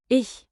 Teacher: the soft German Ich. sound, like air slipping over your tongue